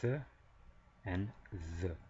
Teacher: dental, meaning just our teeth and tongue really, we get th and th.